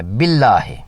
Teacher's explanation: جلالہ کے لام سے پہلے زیر ہے با کے نیچے، اس لام کو باریک پڑھنا ہے،